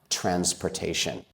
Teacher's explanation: that S there in transportation actually makes the sound Z, like zebra, transportation.